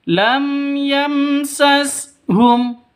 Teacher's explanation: Mim mati bertemu dengan ya. Cara bacanya jelas terang karena bacaan izhar syafawi.